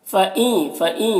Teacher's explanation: نون ساکن کے بعد یا ہے، حروف یومن میں سے، تو نون کو یا سے ملا کر غنہ کے ساتھ میں پڑھیں گے، اس کو ادغام ناقص کہتے ہیں۔